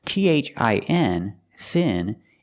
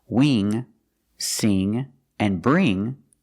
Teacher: with Ing and ink we use the long e sound like green beans